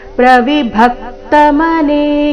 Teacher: ಪ್ರವಿಭಕ್ತ ಭ ಮೇಲೆ ಆಘಾತ